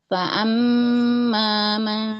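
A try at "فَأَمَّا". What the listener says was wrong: Fa'amma hamzah. Fa'a jangan fa'amma. Jangan jadi ain. Fa'amma.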